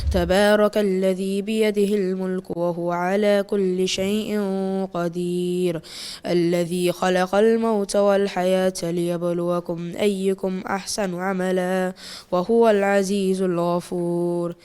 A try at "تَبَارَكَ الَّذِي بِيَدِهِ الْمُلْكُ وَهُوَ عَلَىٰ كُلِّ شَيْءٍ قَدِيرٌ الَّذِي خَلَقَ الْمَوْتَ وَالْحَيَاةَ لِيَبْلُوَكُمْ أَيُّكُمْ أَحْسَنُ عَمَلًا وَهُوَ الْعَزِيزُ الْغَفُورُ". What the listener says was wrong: Again, I could see that you were slightly rushing your recitation that may have resulted in you missing out some ghunnas, some idghams. They were missed out or recited very short.